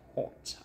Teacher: this is the British sound when you kind of have a round shape at the mouth like hot